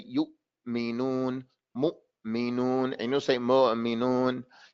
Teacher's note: How do we know that you bring it close hard? Because the Hamza, the sound stops and the air stops.